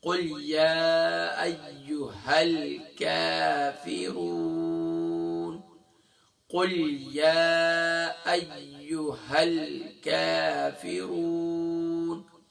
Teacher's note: زبان کی جڑ اور تالو کا سخت حصہ یہاں سے باریک کاف ادا ہوتا ہے